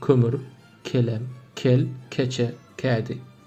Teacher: Çok yumuşak, çok ön damakta söyleniyor Türkçe'de. Ama Türkmence'de biraz art damakta.